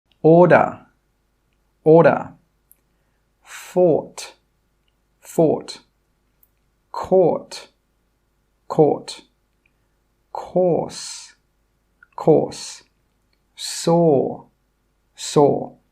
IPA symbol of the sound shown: ɔ